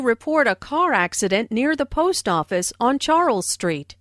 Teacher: Notice how the keywords car accident, post office and Charles Street are stressed.